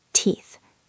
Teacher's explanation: >> Pay attention to the th sound at the end of teeth. It is a soft blowing sound.